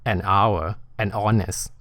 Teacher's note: ตัวHเนี่ยมันไม่ออกเสียงพอไม่ออกเสียงปุ๊บเสียงแรกมันเป็นเสียงออ่างหรือเสียงสระ